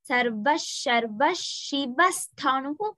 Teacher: Visargam followed by sha will be ish.